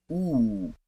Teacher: one final step to the next highest vowel which is actually the highest vowel sound that can be pronounced in the back of the mouth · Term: ooh sound